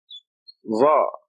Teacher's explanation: this is like a heavy Z, but you stick your tongue out